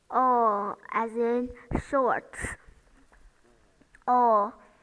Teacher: the mouth and the lips are rounded it's very important for producing this sound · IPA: ɔ